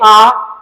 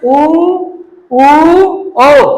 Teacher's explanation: जिन स्वरों का उच्चारण करते समय ओठ गोल हो जाते हैं उसे क्या कहेंगे, वृत्ताकार।